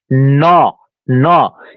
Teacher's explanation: মূর্ধন্য যেটা, জিহ্বা উল্টিয়ে মূর্ধা প্রায় স্পর্শ করতে হয়